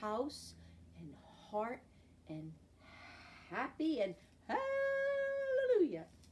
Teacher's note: We have our capital H, our lowercase h. Again, we don't use our voice, just our breath.